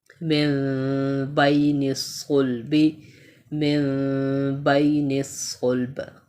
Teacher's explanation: نون ساکن کے بعد کیا ہے, با. تو یہاں پر ہم اقلاب کر رہے ہیں